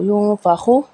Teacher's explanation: یہاں پہ نون ساکن کے بعد فا ہے، یہاں پہ اخفا ہوگا یوں فاخو میں